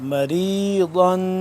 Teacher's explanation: ضاد کو زبان کی بائیں کروٹ کو اوپر والے جو داڑھ ہیں ان کے ساتھ ٹچ کریں گے تو ضاد ادا ہوگا